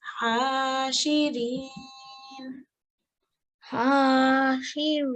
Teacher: The fatha goes and this noon turns into a noon sakin, and you stop with a sukoon above the noon. So you read it as reen.